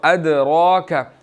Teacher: ادراک، دال پر قلقلہ ہے، را کے اوپر کھڑی زبر ہے، موٹی ہے